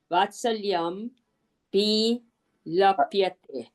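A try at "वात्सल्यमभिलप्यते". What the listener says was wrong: वात्सल्यम अभिलप्यते, ये म आधा हो जाएगा, आ जाएगा, वात्सल्यम अभिलप्यते।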